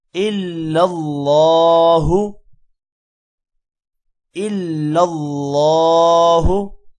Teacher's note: اللہ کے نام کو موٹا کریں گے